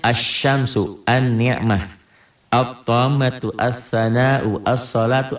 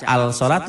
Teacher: dikatakan Alif lamnya ada tapi tidak dibaca